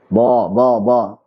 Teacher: fathah jadi tebal yang kayak campuran huruf wawu misalkan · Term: lahan khafi